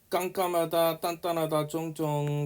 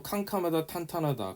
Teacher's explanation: 근육이 긴장되면서 그러나 거세게는 나오지 않는다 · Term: 된소리